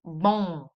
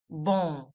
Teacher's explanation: The word for good is going to be bon very nasal. Once again, bon. · Don't forget you don't close the lips in the end. The m is only used to elongate the sound of the vowel.